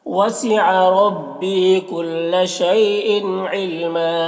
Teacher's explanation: علم یہاں پر وقف کی صورت میں 1 زبر کے ساتھ الف پڑھے جائے گا